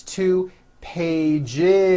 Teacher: S unvoiced. No, it's two pages with a voiced Z